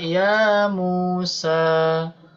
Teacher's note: Mu-nya panjang 2 harokat juga, Pak.